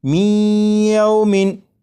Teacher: ادغام اس طرح کہ نون ساکن کو یا میں شامل کر کے پڑھا جا رہا ہے اور غنہ کر کے پڑھا جا رہا ہے